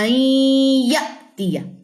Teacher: حمزہ جزم جھٹکا لیتا ہے